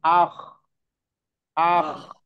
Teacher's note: istilla itu mengangkatnya pangkal lidah atau anak lidah ke atas langit-langit atas bagian dalam · masih ada jarak artinya ada jarak antara lidah dan langit-langit atas ada rongga ada celah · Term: infitah